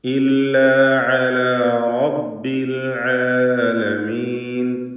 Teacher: ഐനുകളൊക്കെ വ്യക്തമാക്കാൻ ശ്രദ്ധിക്കണം. തൊണ്ടയുടെ മധ്യമാണ് ഐനിൻ്റെ മഖ്റജ് · തൊണ്ടയുടെ മധ്യമാണ് ഐനിൻ്റെ മഖ്റജ്. റബ്ബി എന്ന് പറയുമ്പോൾ റാഇന് തഫ്ഖീമാണ്, തടിപ്പിച്ച് സ്വരഭാരത്തോടെ ഉച്ചരിക്കുക.